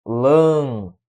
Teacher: Lâmpada, a sílaba tônica é a antepenúltima.